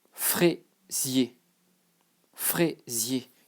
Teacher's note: the S that is between two vowels, it becomes Z, like a Z